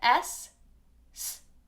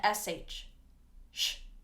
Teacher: these get confused sometimes because they're both unvoiced, meaning we don't use our vocal cords. It is only air. S. So for the S, S, we are not using our vocal cords.